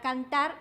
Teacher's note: la sílaba tónica la lleva en la última sílaba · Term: palabra aguda